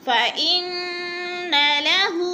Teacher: فإن کی نون مشدد ہے، غنہ کریں گے، ناک میں آواز لے جائیں گے، اور ناک کے اوپر جو ہے زبر ہے، حرکت ہے، حرکت کو بالکل کھینچنا نہیں ہے، کیونکہ اگر حرکت زبر زیر پیش کو کھینچیں گے تو پھر لفظ مجہول ہو جائے گا.